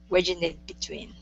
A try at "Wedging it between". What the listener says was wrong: Okay, very nice.